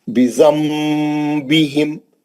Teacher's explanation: بِذَنبِهِمْ، نون ساکن کا اخلاب حرف با، میم لکھا ہوا ہے چھوٹا، وہ نون کی آواز کو میم سے بدل کے غنے سے پڑھیں گے